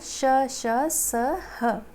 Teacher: इन व्यंजनों के उच्चारण के समय वायु यानी कि मुंह से निकलने वाली वायु मुख में रगड़ खा के ऊष्मा पैदा करती है, यानी कि हल्की सी गर्म हवा निकालती है, ठीक है। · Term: ऊष्म व्यंजन